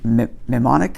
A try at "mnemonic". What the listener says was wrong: Mnemonic, yeah. You don't pronounce the M. I don't know why it's spelled that way, but you don't pronounce the M. And it's a mnemonic.